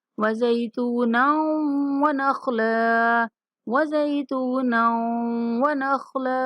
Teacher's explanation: یہاں نون کو واو کے ساتھ ملاتے ہوئے غنہ کے ساتھ ادا کریں گے